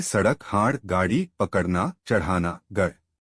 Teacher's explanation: इनका प्रयोग शब्द के मध्य या अंत में होता है। इनका उच्चारण करते समय जीभ झटके से ऊपर जाती है। इन्हें उश्रिप ऊपर फेंका हुआ व्यंजन कहते हैं।